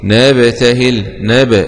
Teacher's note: الباء فيها قلقلة من حروف قطب جد